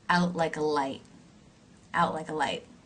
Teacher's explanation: You'll notice the words out and light are the stressed words here. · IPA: [aʊt| laɪk‿ə laɪt|]